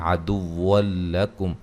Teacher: یہاں نون تنوین کا ادغام ہے لیکن بلا غنہ ہے